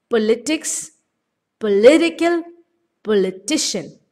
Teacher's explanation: stress keeps moving to the right of the word as the word gets longer